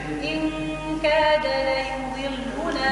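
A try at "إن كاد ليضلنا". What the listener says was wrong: لا مش لا يضلنا لا يضلنا لا مرققه لا يضلنا لا يو لا يضلنا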